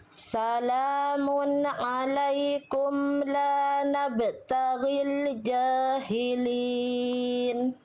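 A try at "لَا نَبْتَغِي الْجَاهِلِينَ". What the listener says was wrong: Tinggal diringankan ba sukunnya la nabtaghi dengan nabtaghi. La nabtaghil jahilin.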